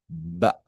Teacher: si usted se coloca la mano aquí en el cuello, la ba produce una vibración en las cuerdas vocales